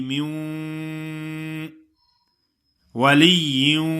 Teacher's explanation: میوں کچھ لوگ ایسے پڑھتے ہیں کہ مین ولیوں، مین پڑھتے ہیں، نون کی آواز تو نہیں آئے گی لیکن اس کی غننے والی صفت جو ہے نا وہ باقی رہے گی، ناک میں آواز آئے گی. میوں ولیوں ایسا پڑھنا ہے، من ولیین نہیں ہے.